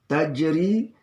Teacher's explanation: Tajri ini juga ja sukun di tengah, namanya qalqalah sugra. Ri ini adalah ri tarqiq, dibaca tipis